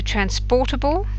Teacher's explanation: You move to transportable, then it's por that takes the stress